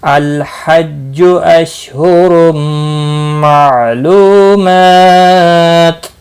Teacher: रौ दो पेश की वजह से पुर पड़ा जाएगा। तनवीन के बाद हुर्फ़ अर्मलून का मीम इदगाम बागुन्ना होगा।